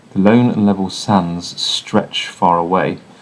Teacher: These sibilant sounds perhaps could reflect the sound of the sand as it moves across the desert.